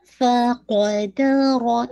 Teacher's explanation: فا اور دال دونوں لائٹ ہے لیکن قاف اینڈ را ہیوی ہے. فقدر، اس کی پریکٹس کیجیے گا، فا ہمس کے ساتھ، قاف شدہ لیٹرز ہے تو اس میں کوئی ایئر باہر نہیں آئے گی.